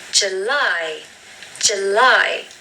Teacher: Now the stress is on the second syllable with this word.